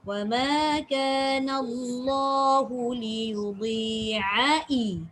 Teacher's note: Ain, tengah halkum dulu baru pergi bawah.